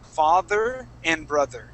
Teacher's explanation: These are both going to be voiced TH sounds.